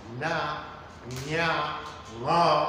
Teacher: Mai motsi da mara motsi za su toshe mafitar baki, so da haka lokacin da suka ware sai iskar ta biyo ta hanci sai ta fito waje. Kaga nan su ne ake samun kamar sautin na, nya, ma da sauransu da ma da sauransu. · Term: ɗan hanci